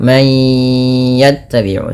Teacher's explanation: Mayya idgham bi gunnah, masukkan bunyi suara nun kepada huruf ya, bukan lagi man yattabi'u tapi menjadi man yattabi'u, sembari ditahan 2 harakat.